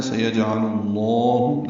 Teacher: ہے، لام کو لام اسم جلالہ سے ملانا ہے، سیجعل اللہ، لام اسم جلالہ کو پر پڑھیں گے